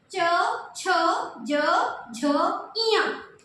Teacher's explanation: आपकी जीभ बार-बार तालू पे टच हो रही है।